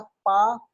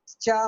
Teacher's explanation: जैसे चा, अब पा में क्या हुआ था? पा, आपने आवाज रोका हवा को और रिलीज कर दिया पा, लेकिन चा में क्या हुआ? रोका और फिर रगड़ से निकाला